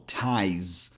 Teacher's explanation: And finally, we get the last syllable, ties. This ends with a Z sound, not an S, so your vocal cords are vibrating a little